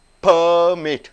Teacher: lips are joining together and bursting out